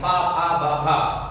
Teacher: इसमें आपके दोनों जो ओठ हैं उ ऊ, मुंह आपका जो है थोड़ा खुला रहता है, लेकिन जब पा का आप पा वर्ग का उच्चारण करते हैं तो दोनों ओठ आपके चिपक जाते हैं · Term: ओष्ठ वर्ण